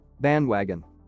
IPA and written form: ˈbændˌwæɡən (bandwagon)